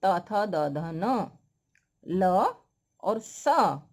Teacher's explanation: त, थ, द, ध, न, ल और स, इन सब का उच्चारण स्थान दंत होता है